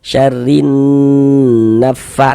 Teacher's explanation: kita tahan sejenak suara kita kita gunahkan, kita dengungkan kira-kira sepanjang dua harakat. Syarrin naffa nanya pendek. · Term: guna syadah